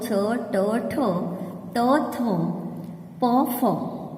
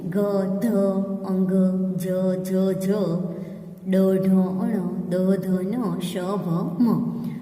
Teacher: छ, ट, ठ, त, थ, प, फ यह कठोर व्यंजन है, अघोष व्यंजन है। घोष का मतलब है मृदु